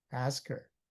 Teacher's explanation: So to make to go to speak faster then you say ask her together. Ask her become ask her. H is almost silent. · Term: linking words or liaison, linking words